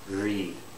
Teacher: the tongue doesn't touch the alveolar Ridge it's curled up